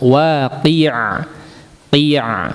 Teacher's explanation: Dijelaskan huruf ainnya. Waqi, kasrohnya dulu dijelaskan. Waqi'a, qi'a, jangan qe, ya.